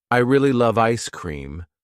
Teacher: the word love is stressed, giving the sentence its energy